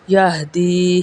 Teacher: یا مدہ ادا ہوگا کیونکہ یا ساکن سے پہلے زیر ہے